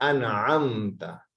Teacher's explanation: आइन की आवाज मिडल ऑफ थ्रोट से आएगी, यानी कि दरमियाने हिस्से से, गले के हलक के दरमियाने हिस्से से।